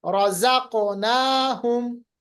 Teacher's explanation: इजहार शफवी, क्योंकि मीम होंठों से अदा होता है तो इसका नाम देते हैं शफवी